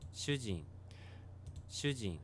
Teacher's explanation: goes down on the gene part Susie shoe gene Susie so it has that kind of pitch profile high pitch to lower pitch · Notice the pitch goes down on the jin part. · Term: pitch accent